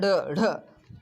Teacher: जीभ ऊपर जाकर झटके से नीचे आती है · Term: उत्क्षिप्त